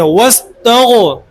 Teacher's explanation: موٹا پڑھنے والا حرف بھی ہے غین، جس کو منہ بھر کے پڑھتے ہیں